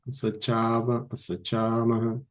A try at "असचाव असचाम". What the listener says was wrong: Asachava, asachama. No visarga. Visarga goes away by nityam, nitaha sa uttamasya, right?